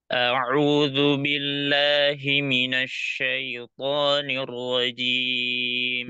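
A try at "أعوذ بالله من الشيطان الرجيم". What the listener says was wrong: Jangan Nah, itu karena mulutnya kurang dibuka sedikit. Syai, syai, syaiton, namanya itu apa? Taklil atau imalah. C, E, majore, ya, itu imalah. Syaiton. A'udzu billahi minasyai, syai. Dan syai.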